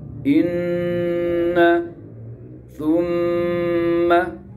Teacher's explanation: Gunna pangkal hidung, nun tasdid dan mim tasdid.